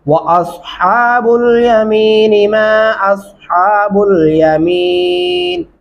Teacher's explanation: अस स्वाद पढ़ेंगे, हा बारीक हा पढ़ेंगे